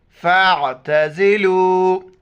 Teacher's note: فا کو عین کے ساتھ ملائیں گے، بیچ میں الف کو نہیں پڑھیں گے، عین کو گلے سے ادا کریں گے۔